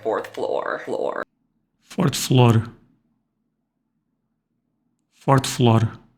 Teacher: African Americans in Appalachia may be more likely to be rhotic